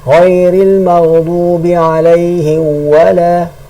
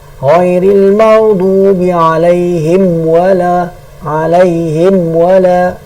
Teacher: Bukanlah suruh tutup tu sampai khomok bibir bukan suruh alaihim wala tu tekan sangat. Alaihim wala cukup tutup sehingga jelas dia punya makhraj mim. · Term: izhar